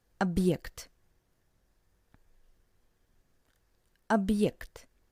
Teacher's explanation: For example, in the word объект, which means object, and you can hear this little pause between ob and ekt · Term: very short pause